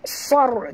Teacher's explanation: baca sar tebal dengan huruf sad, kerana kalau kita baca sar, huruf sin yang keluar ya. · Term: ra tebal